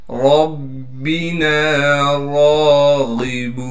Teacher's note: रा पर कड़ा ज़बर होने की वजह से फिर रा को 1 अलिफ के मिकदार खींचेंगे। गैन को मोटा करके पढ़ना है क्योंकि गैन हरूफ मुस्तालिया यानी मोटे हरूफ में से है।